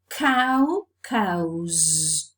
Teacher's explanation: Ow is a diphthong, and we know that vowels and diphthongs are always voiced. So the plural morpheme is realized as a voiced sound z, because the previous sound is a voiced, non-sibilant sound. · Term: assimilation of voice